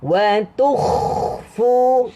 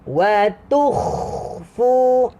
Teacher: Bunyi kha tu dia macam lama. Sebab apa? Sebab kita tengah melepaskan suara dia. Melepaskan. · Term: huruf kha